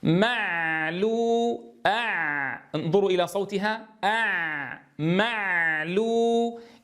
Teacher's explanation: فالعين بينية فلا يصح أن ينقطع صوتها حتى ننطق بالحرف الذي يليها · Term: صوت العين